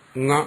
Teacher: ങ എന്ന് ഉച്ചരിക്കുമ്പോൾ അവിടെ ആ ങ എന്ന് പറയുന്നതിൽ ഒരു അനുനാസികം ഉണ്ടല്ലോ. അതുകൊണ്ട് അവിടെ ആ കൂടെ അനുനാസികമാവും.